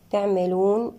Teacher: تعملون، العين هنا بصفة البينية. تعملون، الواو في حالة الوصل ما الطبيعي، وفي حالة الوقف مد عارض للسكون